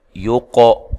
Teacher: لمن، یہاں نون ساکن کا ادغام مع الغنہ ہے۔ یو قو، قاف کو موٹا بھی ادا کریں، ہلانا بھی ہے